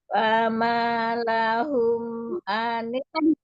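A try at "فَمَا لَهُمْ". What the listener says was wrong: Fama lahum. Mahnya mad 2 harakat aja, jangan kepanjangan. Fama lahum.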